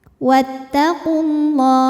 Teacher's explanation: Lam jalalah dibunyikan secara tafkhim karena huruf sebelumnya berbaris dhammah maka dibacanya tebal